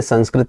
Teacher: अनुस्वार का उच्चारण स्थान नासिका होता है